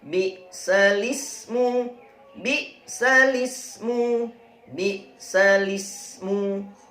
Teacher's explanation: Tulisannya bi'sal ismu dibaca bi'salismu. Harokat al ismu dibalik menjadi lismu. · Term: bacaan naql